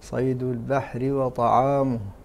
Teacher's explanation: هذه الحروف عامتها حروف استفال، حكمها حقها الترقيق غير حرف الصاد والطاء، فهما حرفا استعلاء حقهما التفخيم